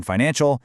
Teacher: In financial, it's all about getting a clean dark L at the end